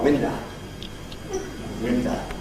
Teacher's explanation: In Broad Cockney, words that in standard English end in O don't end in the expected O, window, but usually in a plain schwa, window. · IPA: [ˈwɪndə]